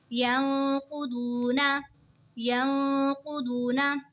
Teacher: यंक़ुदूना, यंक़ुदूना, यहाँ पे देखें जी नून साकिन है और नून साकिन के बाद हुरूफ़े इक़फ़ा का क़ौफ़ आ रहा है तो इक़फ़ा होगा यानी गुन्ना करके पढ़ेंगे। यहाँ पे वाव साकिन है, वाव साकिन से पहले पेश है तो वाव मद्दा होगा, इसीलिए इसको खींच के पढ़ेंगे।